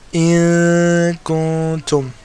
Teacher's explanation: And the Ikhfa is also held for two harakas.